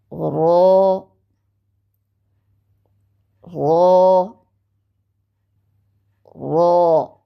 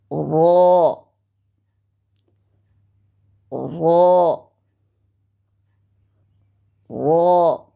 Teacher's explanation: ऊपर वाले दांतों के मसूड़ों से लगाकर मोटी आवाज़ में हम इसको अदा करते हैं। दांतों के मसूड़े जिनको हम गम्स कहते हैं, वहाँ पर ज़बान की नोक की पुश्त लगती है, तो इसको मोटी आवाज़ में अदा करते हैं।